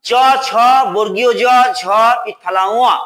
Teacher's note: চ বর্গের বর্ণগুলোকে বলা হয় তালব্য বর্ণ